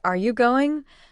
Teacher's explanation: rises at the end because it's a question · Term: intonation